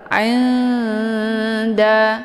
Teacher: Nun dengan ta juga posisinya saling berdekatan, maka dinamakan dengan aqrab. Cara bacanya, nunnya disamarkan kemudian siap-siap menuju ke huruf dal. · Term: ikhfa aqrab